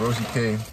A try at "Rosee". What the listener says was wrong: It's not Rosee, it's Rose. Bro, my name has two E's and the other E is silent.